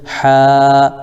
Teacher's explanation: یہاں پر الف مدہ تو ایک الف کھینچیں گے